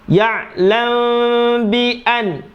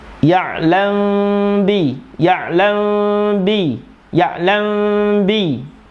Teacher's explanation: mim sukun ketemu ba, itu namanya ikhfa syafawi. Lamba, jadi mulutnya ini mau mingkem tapi nggak jadi, ada rongga sedikit itu.